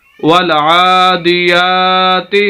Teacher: आइन को भी लंबा करना है, या को भी लंबा करना है